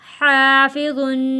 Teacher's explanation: حا الف زبر حا، فا زیر فی، حافی، ضا دو پیش ظن، حافظن۔ ضا کو بھی ہم نے موٹا پڑھا ہے اور یہاں پر غنہ بھی کیا ہے